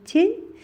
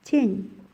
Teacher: Тень дагы эле жана жогоруда айтылгандай тилдин учун таңдайды көздөй көтөрүү менен, бир топ көтөрүү менен жасалат экен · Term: жумшак